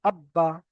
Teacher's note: বাটা দুবার উচ্চারণ হলো একবার আগের সঙ্গে এবং একবার নিজে নিজে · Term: তাসদিদ